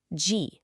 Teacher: Aspiration is the name of the game here, too. The J sound in G is unaspirated, no puff.